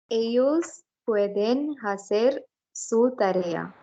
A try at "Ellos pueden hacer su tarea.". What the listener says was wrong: Ellos pueden hacer, not hacer. H will be silent. So hacer su tarea.